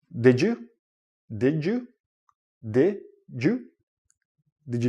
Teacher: this goes with the first idea when you're connecting words but when you're connecting words and you have a D and a y together it becomes like a J sound